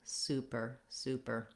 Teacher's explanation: you want your er to be short and your sue to be long